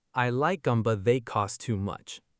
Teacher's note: Erase the aspiration on the T of but, slide right into they.